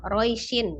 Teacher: Ketika dia dibaca di akhir bertemu dengan satu huruf yang disukunkan karena wakof, maka madlin dibaca panjang, maka roish panjang. Tapi ketika dia disambung, diwasol di tengah-tengah, maka dia menjadi pendek ya, roishin.